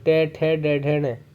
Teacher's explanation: मूर्धन्य में जब हम बोलते हैं हमारी जीभ सट जाती है ऊपर की तरफ हमारी मूर्धा से। तो जैसे मैंने बोला टे, तो जीभ सट रही है, तो टे वर्ग के जितने भी होंगे टे, ठे, डे, ढे, ने, ये हमारे मूर्धन्य में आएंगे, तो ये भी करेक्ट है।